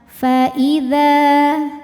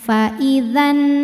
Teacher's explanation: Jika berhenti di dha, hukumnya mad tabi'i sebab ada alif didahului fathah. Jadi kalau berhenti panjangin dua harokat.